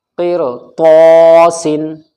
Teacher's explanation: را ساکن سے پہلے قاف کے نیچے زیر ہے تو را باریک پڑھی جائے گی